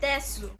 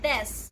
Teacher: it's another vowel devoicing, but this time it's in the letter U or at the end of a word. So it's a vowel devoicing for the copula or the to be words.